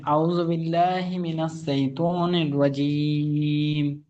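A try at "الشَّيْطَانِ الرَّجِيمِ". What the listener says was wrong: সাই নয়, বলেন শাই। শাইতানির রাজীম।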